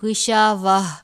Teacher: آپ اس تا کو ہا میں تبدیل کر دیں گے، تا نہیں پڑھیں گے، غشاوہ. اور اگر آپ نے وقف نہیں کرنا تو آپ اس کو غشاوہ تنو پڑھیں گے.